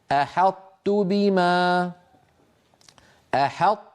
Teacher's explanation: فيطبقون السنتهم على طاء غير مقلقله ثم يجافون اللسان ويباعدونه عن تاء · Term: صفة الإطباق